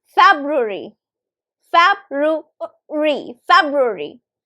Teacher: So the third syllable is actually, it's like kind of swallowed. You don't exactly pronounce the third syllable. You just kind of swallow it.